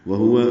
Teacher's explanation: دونوں واؤ ہونٹوں کی نا تمام گلائی سے ادا ہوگی